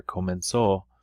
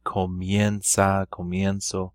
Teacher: Well, why there's no change here is because the stress is not on the E. Whenever you have that stress on this E for comenzar, the E splits to IE.